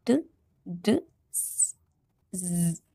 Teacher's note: A speech sound made with the tongue touching the part of the mouth behind the upper front teeth.